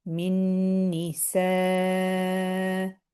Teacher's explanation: ni short, sa is going to obviously be elongated five counts